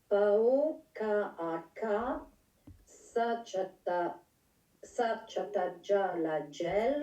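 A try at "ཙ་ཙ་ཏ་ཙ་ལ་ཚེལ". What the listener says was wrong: Satsatatsa, c'est un tsa. Satsatatsa la tsel.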